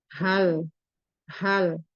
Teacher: H di sini merupakan huruf halqi. Jadi tenggorokan paling bawah. tenggorokan di aksal halqi ee sifatnya itu ee hames dan merkwa. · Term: huruf halki